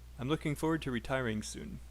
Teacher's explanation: Looking is stressed. Forward is stressed. Retiring is stressed. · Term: sentence stress